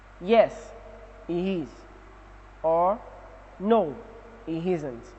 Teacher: The response takes a falling tone.